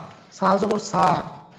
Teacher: জিহ্বার আগা যেন সামনের উপরে দুই দাঁতের আগার সাথে লাগে। যখন সা উচ্চারণ করব তখন জি।